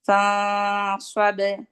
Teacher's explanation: استعلا کی صفت ہونی چاہیے کیونکہ صاد میں استعلا ہے، تو آپ نے جو آپ کا اخفا کا ساؤنڈ ہوگا اس میں بھی استعلا ہوگی